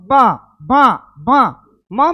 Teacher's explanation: मां ओठ से भी बोल रहे हैं और नाक से भी बोल रहे